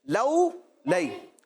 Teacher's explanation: بچوں، کرنا یہ ہے کہ واو لین اور یا لین کو ہم نے بغیر کھینچے، بغیر جھٹکا دیے، معروف اور نرمی کے ساتھ پڑھنا ہے۔ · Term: حروف لین